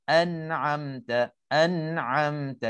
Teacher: Hukumnya izhar halqi, bacanya tidak dengung. Terangkan nun, jelaskan nun ataupun tanwin.